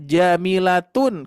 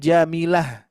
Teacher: ketika wakaf menghentikan bacaan tidak dibaca ta melainkan dibaca ha sukun